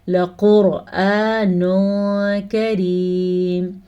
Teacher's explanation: قاف کو ہم پر پڑھیں گے تو موٹا قاف پڑ جائے گا.